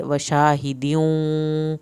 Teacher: والیوم الموعود وشاہدیوں، وشاہدیوں یہاں پر ہا پڑھنا ہے اندر سے، دیوں واو کے اوپر شد ہے، شد پہ دیر لگے گی اور یہ دال کی تنوین واو کے ساتھ مل رہی ہے